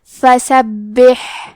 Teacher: کلمت فسبح میں حرف البا کو 2 حرف کے برابر پڑھیں گے کیونکہ اس پہ تشدید ہے، آخر میں ہا ساکن ہے لہذا ہا کو ہمزے سے پڑھنا ہے، تو ہم یہ کلمہ کو ایسے پڑھیں گے فسبح۔